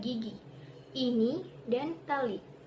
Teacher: Alofon I diterapkan ketika kita mengucap kata gigi, ini, dan tali, yang memiliki suku kata terbuka. Apabila dipenggal, ketiga kata tersebut akan ditulis menjadi gigi, ini, dan tali.